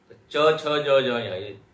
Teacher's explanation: च छ ज झ ञ ये तालव्य है